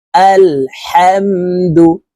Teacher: এই শব্দটি আলহামদু পড়ি এই হাকে হলকের শুরু থেকে পড়ে থাকি এটি বড় হা হলকের মধ্যখান থেকে উচ্চারণ করতে হবে